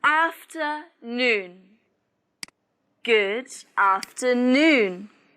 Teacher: pay attention to the stress is on noon